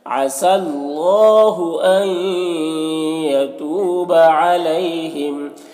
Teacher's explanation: علیہ میں یالین سے نرم آواز کے ساتھ جلد پڑھیں گے